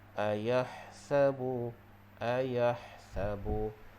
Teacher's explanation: Ha di sini kita kena bacanya dengan ha pedas, iaitu ha makhrajnya di bahagian tengah kerongkong.